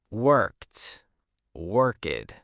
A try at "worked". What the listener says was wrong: Good, but careful with the pronunciation. In American English, it's not worked, it's a sharp T sound at the end.